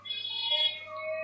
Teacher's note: बा आपका ओष्ठ व्यंजन है